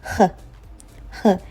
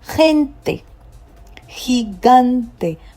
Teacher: But when you see a G followed by E or I, you're going to get the sound h, h. It's H, but it's more or less in your throat, like you want to say hi, hi.